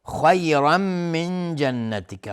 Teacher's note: خا از حروف استعلاء غلیظ تلفظ میشه. را تنوین نصب روشه، مفخم هست و تنوین بعدش میم ادغام با غنه.